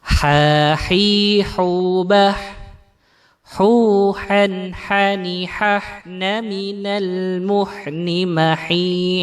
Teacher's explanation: Jadi dibaca dari tengah tengah tenggorokan bagian tengah, membacanya bersih, tidak ada seraknya, tetapi juga tidak seperti huruf H. · Nah, huruf ha ini membacanya sangat bersih. Ya, dia tidak menggetarkan dada seperti huruf H, tapi dia tidak serak seperti huruf Kha · Kemudian yang ketiga adalah selanjutnya adalah huruf ha. Huruf ha ini keluar dari tenggorokan bagian tengah sama dengan huruf ain. Nah, huruf ha ini membacanya sangat bersih.